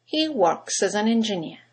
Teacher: you've got three words that begin with a vowel as an and engineer in Connected speech they all run into each other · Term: phonetic links